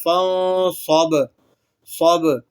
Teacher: با کو آپ نے ہلا کر پڑھنا ہے کیونکہ با حروف قلقلہ میں سے ہے